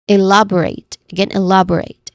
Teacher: When it comes to pronunciation, elaborate has four syllables. It's we stress here on the second syllable.